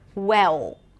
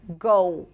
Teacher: Instead of go, you'll hear go. So, you don't really hear the L and it actually sounds like the O sound or an ooh sound